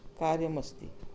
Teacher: जैसे कार्यम के साथ अस्ति, तो कार्यम के साथ अस्ति होगा तो कार्यम का जो म है उसके साथ अस्ति का अ जुड़कर म पूरा हो जाएगा, तो हो जाएगा कार्यम अस्ति। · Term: संयोग